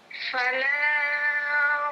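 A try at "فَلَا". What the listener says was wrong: Nah, fala panjangnya berapa harokat ini? harokat. Nah, kalau 2 harokat berarti jangan kepanjangan, kurangi dikit.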